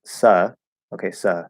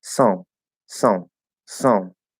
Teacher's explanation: It's gonna make it sound different because you're going to move into a nasal schwa, right? You're actually opening that nose flap and saying it more through the nose than through the mouth. And so even though your tongue position might be the same, that's a feature of Portuguese and some other languages where you actually get sort of additional vowel sounds by making some nasal and some through the mouth.